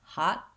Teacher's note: Other words that end with t in American English, like hot or not, I might use a stopped t where I don't release the air. Hot, my tongue goes up and doesn't release.